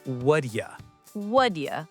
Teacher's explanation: Another big one is what do you? In fast English, the T in what changes to a D sound, and you becomes ya. So it sounds like what ya.